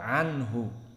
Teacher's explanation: ain muraqqaqah wa nun muraqqaqah wal ha muraqqaqah, maka datar